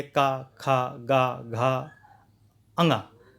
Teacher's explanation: तो ये कंठ से, गले से ध्वनि निकल रही है, इसीलिए कंठव्य बोला जाता है